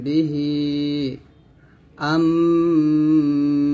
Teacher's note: হচ্ছে অথবা মিম সাকিন ইকফা হচ্ছে মিম সাকিনের পর বা আসবে যদি মিম সাকিনের পর বা আসে তাহলে সেইখানে গুন্না আদায় করে পড়তে হবে